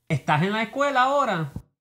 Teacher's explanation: The S consonant, S, is often aspirated or dropped, like it is in Chilean and Rio Platense accents. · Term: aspiration